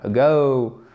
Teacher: Ce n'est pas hours, non, surtout pas, c'est hours, ago, accent tonique d'ailleurs sur la seconde syllabe, ago, ok?